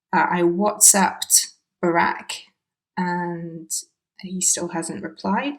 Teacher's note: Because of the B in Barack, because of the following consonant, the ED ending actually disappears. So instead of saying I WhatsApped Barack, it's hard to say, it sounds like he's using a present tense verb, I WhatsApp Barack.